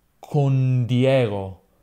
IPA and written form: kon ˈdjeɣo (Con Diego)